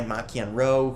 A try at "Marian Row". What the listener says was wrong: Isn't it pronounced Maron? There's an R in it, right?